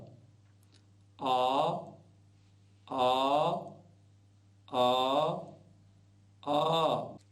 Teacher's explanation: तीन मात्राओं वाला होने पर आ इस प्रकार से उच्चारण करें इसे प्लुत कहते हैं